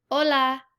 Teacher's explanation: the h is a silent letter